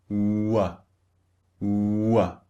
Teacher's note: They start very, very rounded and then they become relaxed, which means neutral.